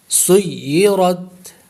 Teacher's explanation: سین کو یا سے ملائیں گے کیونکہ یا مشدد ہے اور مشدد حرف دو مرتبہ پڑھا جاتا ہے.